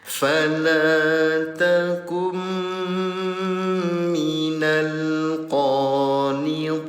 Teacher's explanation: Nun sukun bertemu dengan huruf mim. Dengungkan cara bacanya selama dua harokat.